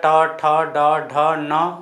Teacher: सभी का उच्चारण स्थान कहां से होता है मुर्धा से तो मुर्धा से उच्चारण होता है इसीलिए इसको बोला जाता है मुर्धन्य वर्ण